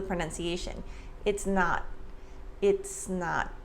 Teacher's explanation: So the S in it's links to the N sound in not. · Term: linking and blending